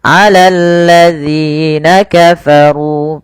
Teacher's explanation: Panjangkan dzi sepanjang dua harakat karena mad thabi'i.